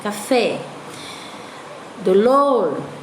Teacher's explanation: então a última sílaba é mais forte